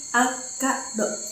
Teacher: kata akado memiliki bunyi konsonan rangkap ke yang digunakan lebih panjang atau lebih kuat dibandingkan konsonan tunggal